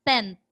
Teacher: the nasal is actually articulated at the interdental, meaning let your tongue out.